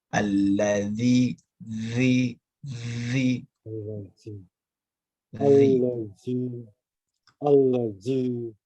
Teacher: Untuk zalnya bisa digigit, ya Pak. Lidahnya menyentuh kepada gigi seri atas